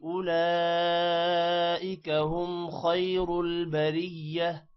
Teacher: اولئک لام پر مد ہے، لام لمبا ہوگا، اور خیر خا موٹا ہوگا اور را بھی موٹا ہوگا